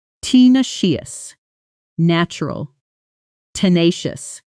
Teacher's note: The weight landing hard on that middle syllable. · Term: stress pattern